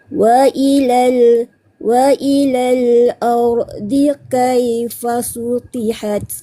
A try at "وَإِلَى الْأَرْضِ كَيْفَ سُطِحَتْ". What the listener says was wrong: Yang terakhir sebutan teguran saya pada huruf dot kah? Baik, huruf dotnya belum tepat lagi bunyinya.